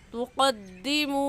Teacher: वाव मद्दा को एक अलिफ के बराबर खींचेंगे